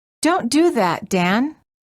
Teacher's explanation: the tip of your tongue must move quickly from touching the teeth to touching the gum ridge so that both sounds can be distinctly heard.